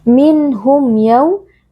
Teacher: Minhum, minhum yaw izhar syafawi karena ada mim sukun yang bertemu dengan huruf ya, cara membacanya mim sukun kita baca dengan jelas tanpa berdengung